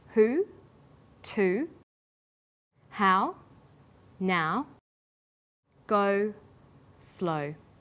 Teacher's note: high back vowels sounds that are produced with the highest part of the tongue but close to the back of the mouth